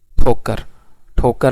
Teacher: तो ठोकर में जो ठ है वो एस्पिरेटेड है।